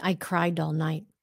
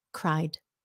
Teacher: It's a d. Very light at the end, but you have to have it.